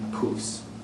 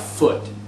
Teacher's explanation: voiceless stops change into voiceless fricatives. So P changes into F. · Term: Grimm's law